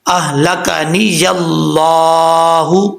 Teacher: اللہ کے لام سے پہلے زبر ہے، اس لیے اس کو پر پڑھا جائے گا، موٹا پڑھا جائے گا